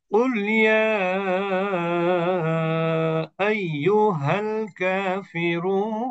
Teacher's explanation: তিন আলিফ মাদ, মাদ্দে আরজি